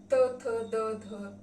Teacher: दांत से निर्माण होने वाली ध्वनि जो है दंत ध्वनि